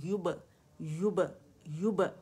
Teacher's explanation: با پہ باریک قلقلہ کریں